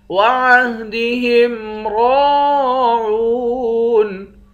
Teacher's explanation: را اور واو دونوں کو ایک ایک الف کے مقدار کھینچیں گے، دونوں حروف مدہ ہیں۔ را کو موٹا بھی پڑھیں گے، آخر میں نون ہے، نون ساکن ہے۔